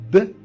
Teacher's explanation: إلا كان لي دو ليفغ الشفتين بجوج بحال ب راه بيلابيال